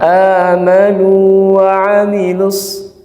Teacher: Jadi nggak idgham ya, tidak amanu wa amilus, karena walaupun tulisannya sama tapi berbeda. Yang pertama waw mad itu makhrajnya al jauf, yang wa itu yang berharokat itu makhrajnya apa? Syafatan, dua bibir. Jadi ketika makhraj berbeda walaupun tulisan sama, maka sebenarnya itu beda huruf.